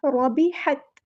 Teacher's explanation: رو کو ہم نے پورا ادا کرنا ہے، ہیوی لیٹر ہے · ہا کو مستحلق یعنی مڈل تھروٹ سے ادا کرنا